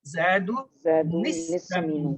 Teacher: زید کی تنوین جو ہے وہ نون کے ساتھ ملے گی